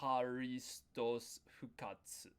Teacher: the last Tsu we didn't really need to pronounce